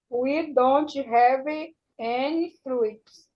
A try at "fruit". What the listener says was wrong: Pronunciation, fruit. Yes, no E, not fruit. Fruit. Fruit.